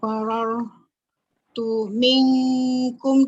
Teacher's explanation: Okey, roh baca tebal kan? Roh baca tebal sebab roh mati sebelumnya berbaris fathah